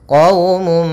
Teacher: masukkan suara mimnya, suara munnya kepada mim sehingga hilang suara nunnya, masuk kepada mim. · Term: idgham bi gunnah